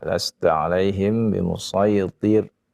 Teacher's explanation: untuk bacaannya pada kesempatan kali ini huruf ra-nya tadi ya. Huruf ra-nya yang yang didahului dengan kasrah ya, itu hendaknya dibaca tipis ya, tidak dibaca sama semua ya, jadi tebal semua jadinya.